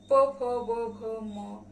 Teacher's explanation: ओष्ठ से निर्माण होने वाली ओष्ठ ध्वनि